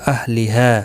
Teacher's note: ہا الف مدہ ہے، ایک الف کی مقدار کے برابر کھینچ کر کریں گے. وقف کی صورت میں اور ملانے کی صورت میں 3 الف کی مقدار کے برابر کھینچ کر پڑھیں گے، کیونکہ جب بھی الف مدہ یہاں حروف مدہ کے بعد حمزہ بشکل الف آتا ہے تو چھوٹی مد لگتی ہے.